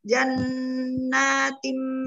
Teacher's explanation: nun bertasdid bacaan kunah yang sempurna jadi ditahan jan sambil didengungkan hidung